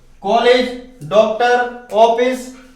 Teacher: आगत स्वर, ओ को आगत स्वर कहते हैं। इनका उच्चारण आ और ओ के मध्य होता है